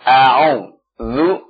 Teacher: Ta'awudnya a'udzu hamzahnya perhatikan ya. Hamzah dengan ain beda makhraj ya. Hamzah di aqsal halq ya. Ain di wasatul halq.